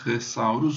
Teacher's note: Como a língua toca nos dentes, ela não se confunde com o S